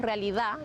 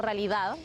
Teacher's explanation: no pronunciamos la d